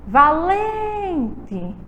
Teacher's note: O lem é a sílaba tônica, sendo uma palavra paroxítona